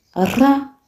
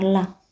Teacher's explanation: Ra ni kimadede ilali la ni kitambaza